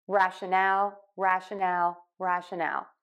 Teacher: then in rationale we're going to stress syllable three a little bit more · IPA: ˌræʃəˈnæl